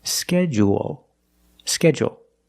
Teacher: in both pronunciations we end with a dark l because the L is after a vowel at the end of the word